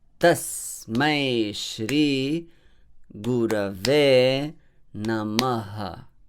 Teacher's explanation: Ta is a short vowel syllable, but it is heavy here.